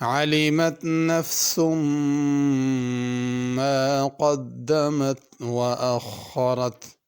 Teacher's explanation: علمت میں عین ہے، اس کو علمت حمزہ کے ساتھ نہیں پڑھنا